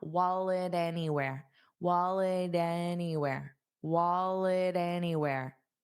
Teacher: wallet, it'll have a flap T sound, so we just don't push out that sound